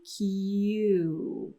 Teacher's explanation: the end so we have the tongue gliding on the roof for the yeah sound Q and then the lips gliding at the end for the end of the u sound